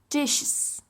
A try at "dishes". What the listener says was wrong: Which is what? No, it's dishes with an extra syllable. Dish, one. Dishes.